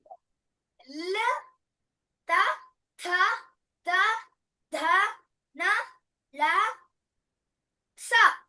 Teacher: మనం పలికేటప్పుడు ఇవి దంతాలు తగులుతూఉంది మన నాలిక అందుకని దంతవ్యః అన్నాం దంతః దంత్యః దంత్యః అది దంతవ్యః దంత్యః దంతాలకు తగులుతుంది